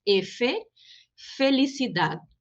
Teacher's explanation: A letra F, en español se llama F, entonces, atención, la E es como nuestra E que llamamos de fechada, cerrada